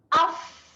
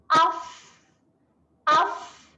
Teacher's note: Huruf fa pastikan bibir, gigi atas bertemu dengan bibir bawah ke hujung. Okay, jadi dan dikeluarkan angin sedikit.